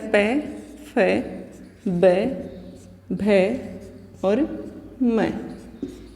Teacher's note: फिर आता है प, फ, ब, भ और म। ये वर्ण जब हम बोलते हैं तो हमारे दोनों होठ आपस में मिलते हैं, तो औष्ठ्य वर्ण होता है ये।